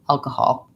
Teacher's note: So in alcohol, I have first syllable stress.